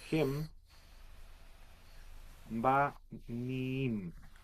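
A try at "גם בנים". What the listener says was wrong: Claro, Gem Banim.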